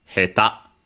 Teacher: accented on the last syllable